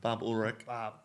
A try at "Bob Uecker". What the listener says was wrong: No, the L is silent.